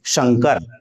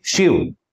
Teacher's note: आपकी जीभ च वर्ग के यानी तालु के पास जाए और उसके बाद इसका उच्चारण करें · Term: तालव्य